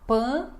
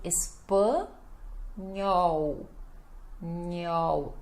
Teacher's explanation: o pan também nasal, ele fica fechado